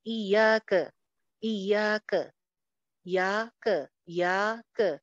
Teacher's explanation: آدھا آدھ کا فرق ہوتا ہے اس میں، زبر میں اور الف میں